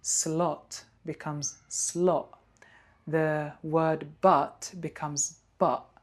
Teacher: So we got the glottal stop in British English.